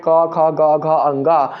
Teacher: उन सभी वर्णों का उच्चारण हमारे मुख के कंठ वाले भाग से किया जाता है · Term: क वर्ग